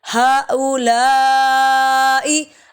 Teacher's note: پہلے یہاں پہ چھوٹی مد ہے، 3 الف کے برابر لمبا کریں گے، دوسرے پہ بڑی مد ہے 5 الف کے برابر